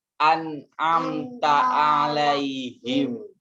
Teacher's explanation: jangan dilepas dulu bunyi mim sukun nya sebelum masuk ke huruf ta